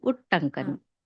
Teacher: తకారం కాస్త టవర్గంలోని టాగా మారిపోయింది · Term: ష్టుత్వ సంధి